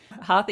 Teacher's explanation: the cerebral sound which basically you put your tongue up at the top as opposed to putting the dental sound which is putting your tongue by your teeth